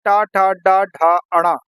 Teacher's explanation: ट वर्ग में आते ट ठ ड ढ अण यह मूर्धा से बोले जाते हैं